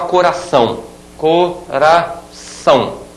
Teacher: A última sílaba é mais forte do que as outras. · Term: sílaba tônica